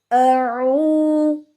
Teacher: حلق درمیان سے ادا ہوتا ہے